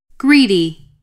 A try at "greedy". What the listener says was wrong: 또 L 소리 났어. Greedy 이렇게 보고 있다니까. Greedy가 아니고 greedy, greedy, greedy.